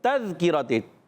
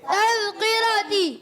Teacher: تا مشدد ہے اور تا مشدد ذرا رک کر ادا کریں گے. تذکرتی، تا کو زال سے ملائیں گے، زال کو زا نہیں پڑھیں گے، تذکرہ نہیں، تذکرتی.